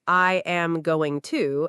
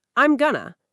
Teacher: Native speakers don't say, I am going to, as 4 separate words. They say something like, I'm gonna. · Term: words connect